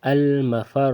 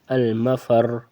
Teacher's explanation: یہ را کے اوپر پیش ہے تو اس لیے اس کو موٹا پڑھیں گے